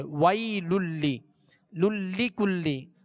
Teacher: دونوں لام کے نیچے جو زیر ہے اس کو دراز نہیں کرنا. ویل للی کلی اس طرح کھینچنا نہیں، بلکہ بغیر کھینچے بغیر جھٹکا دیے اسے معروف پڑھیں گے.